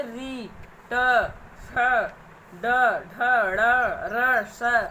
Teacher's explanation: ये मूर्धा को स्पर्श करते हुए निकलती है, तो इन्हें मूर्धन्य व्यंजन कहते हैं